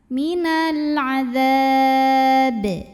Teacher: Ba-nya ini jika berhenti jadi sukun dan dihukumi qalqalah kubra karena ada huruf qalqalah yaitu ba yang sukunnya ini disukunkan, sukun karena berhenti ya. Maka dibacanya memantul dengan pantulan yang besar.